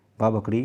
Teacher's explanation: जो बा है, बा बकरी, वह ओष्ठ भी है, अल्पप्राण भी है, घोष भी है।